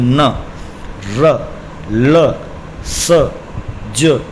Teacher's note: देखिए स, ज में तो नीचे वाले दांतों से और नरल में ऊपर वाले दांतों से। दांतों से नहीं, एक्चुअली में मसूड़ों और दांतों का जो जहाँ से ज्वाइनिंग पॉइंट है वहाँ से, ठीक है।